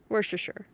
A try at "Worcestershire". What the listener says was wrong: You're adding a T. No, you said worst. Worcestershire. Worcestershire. Worcestershire from Google. Worcestershire.